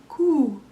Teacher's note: So what we're going to do is we're going to add a gentle, soft k in front of our oo.